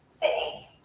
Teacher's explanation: I'm holding in that air when I'm not pronouncing the T sound, and then I release it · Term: glottal T